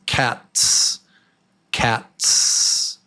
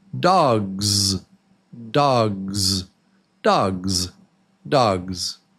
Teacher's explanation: Really, the Z sound has voice.